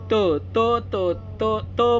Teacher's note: त म्हणलं की जीभ आहे ना दाताला लागते